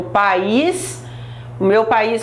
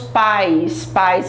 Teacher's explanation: o meu país Brasil é um hiato e os meus pais pais é ditongo não separa